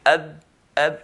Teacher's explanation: if you put your hand and say ab, you notice no air will flow